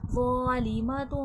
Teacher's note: ظا حرف مستعلیہ بھی ہے اور نرمی والا حرف بھی ہے، موٹا بھی کیا جائے گا اور نرمی سے بھی پڑھا جائے گا، اس میں سختی سیٹھی کی آواز نہ آئے.